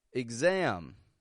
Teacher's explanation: Why is X sounding like igs? Because it is starting the unstressed syllable. And so we don't pronounce a full eggs, otherwise it would sound stressed. And so we give it a quick and quiet igs, igs.